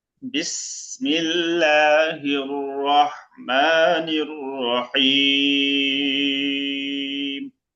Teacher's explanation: মোটা হবে। রহমানির র মোটা হবে।